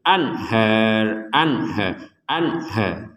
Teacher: Jangan sampai ada dengung, jangan sampai ada samar. Jadi gak ada dengung dan samar sama sekali. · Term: nun sukun bertemu H